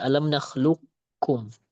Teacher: idgham naqis yang mana kita sisakan sifat tebal pada qaf ya. Jadi kita sisakan sifat isti'la atau sifat tebal yang ada pada qaf.